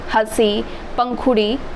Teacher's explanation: उच्चारण करते समय हवा नाक और मुँह दोनों से निकलती हो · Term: अनुनासिक